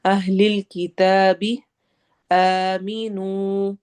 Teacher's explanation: آ میں الف مدہ ہو رہی ہے تو ہم اس کو تھوڑا لمبا کریں گے